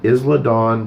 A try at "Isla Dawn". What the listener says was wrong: And I apologize for the correction, but it's Isla Dawn. The S is silent.